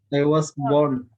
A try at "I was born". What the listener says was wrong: Ya, R-nya hampir nggak kedengaran. I was born.